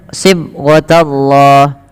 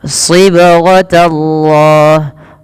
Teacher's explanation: Baik, kita perhatikan pada lafal sibghatallahi wa man ahsan. pada lafal huruf ba yang dia sukun ini perlu dipantulkan dalam melafalkannya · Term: qalqalah